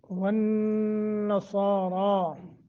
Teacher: والنصارى، نون مشدد ہے، با کو موٹا کر کے اور گنہ کر کے، صاد اور را دونوں ان کو پر کرنا ہے۔